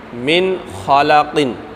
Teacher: اسی طرح آگے خا کی مثال لیتے ہیں، جیسے من خالقن، ٹھیک ہے، تو من خالقن کے اندر ہم نے کیا کیا کہ یہاں پر خا ہے، اگرچہ نون ساکن ہے پیچھے، لیکن آگے خا حروف حلقی میں سے آ رہی ہے، اس لیے یہاں پر ہم غنہ نہیں کر پا رہے اور نہیں کریں گے، یہ اظہار ہو گیا۔